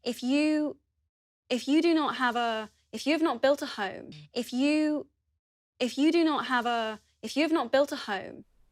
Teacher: As you can hear, uses a long /uː/ vowel in the word 'you'.